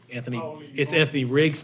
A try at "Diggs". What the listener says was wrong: It's Diggs, not Riggs.